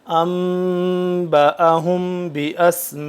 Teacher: میم ساکن کے بعد جب با آ جائے تو اخفا کیا جائے گا. تو اب یہاں پہ آ گیا تو اب یہاں پہ اخفا کر کے پڑھیں گے.